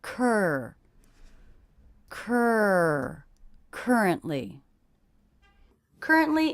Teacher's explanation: in this three-syllable word i noticed that stress is on the first syllable